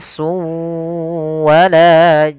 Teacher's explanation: Awalnya bunyi n un ketemu dengan wau, maka tanwinnya masuk ke huruf wau. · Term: idgam